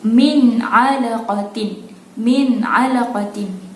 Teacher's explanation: nun sakinah bertemu dengan ain, cara bacanya jelas, nyata dan terang